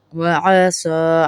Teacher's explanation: عین کو گلے کے درمیان سے نکالیں گے۔